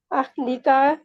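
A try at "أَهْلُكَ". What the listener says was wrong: का को खींचे ना, आगे अलिफ आप डाले हैं। अहली का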